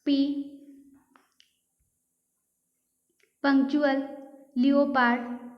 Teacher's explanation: This is because the P, T and K sounds are aspired and those have a puff of air that is released when it is articulated